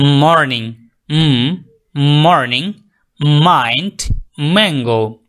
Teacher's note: sound touches both lips মর্নিং মর্নিং মাইন্ড ম্যাংগো কিছুটা নাকে আপনার ইয়ে হবে গুন্নার মত